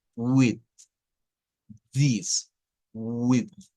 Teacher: TH vibrante. Hay que sacar la lengua y with, this, with.